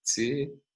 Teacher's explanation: in particular so-called Cockney English, working class, traditionally a working class variety of English in London, we find affricates before high vowels. So the word for T is realized as tsi.